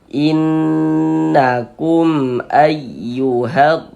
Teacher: di bagian inn-nya suaranya kita tahan panjangkan sebentar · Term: ghunah musyaddadah